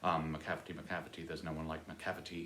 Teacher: the stress is on the cav, and so you have to have the cavity, three-syllable rhyme every time he uses it.